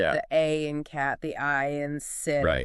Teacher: So, the sound doesn't really change much while you're saying it. And they tend to be relatively brief. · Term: short vowels